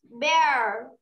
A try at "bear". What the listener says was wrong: Okay, very nice.